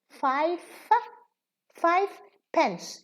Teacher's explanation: we pronounce it with a fa, not a va.